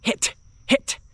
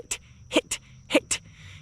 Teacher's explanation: whenever you hit that T, it cuts off the air because you don't want the airflow to just drag out